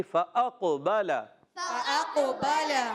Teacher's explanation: قاف کا مخرج زبان کی جڑ اور تعلقاً نرم حصہ آپ نے یاد رکھنا ہے، اور یہاں قلقلہ ہوگا، آواز لوٹ کر آئے گی